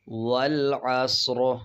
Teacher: اور وقف کرتے ہوئے را موٹا پڑھیں گے